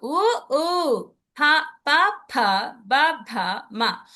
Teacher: ఇవి చెప్పేటప్పుడు పెదాలకి తగులుతుంది కాబట్టి ఈ పెదాల్ని అవి ఓష్టాలు అంటారు కాబట్టి ఓష్ట్యహ.